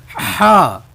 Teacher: ہا، حلق کے بالکل انگلی رکھیں گے آپ، اور حلق کے درمیان سے ادا کریں گے اس کو، اور اس کی آواز درمیانی نکالنی ہے، موٹی نہیں